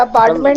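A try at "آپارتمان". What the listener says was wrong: جی اپارٹمنٹ نہیں ہوتی ہے، اپارٹمان.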